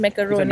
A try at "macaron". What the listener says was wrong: It's like macaron. No, it's not roux. It's raw. roux- No, if you do roux, it's actually the grandma's one.